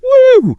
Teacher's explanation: And a key part of it is stretching out that vowel sound. A long, high-pitched woo communicates a much deeper sense of positive surprise than a quick, clipped wow.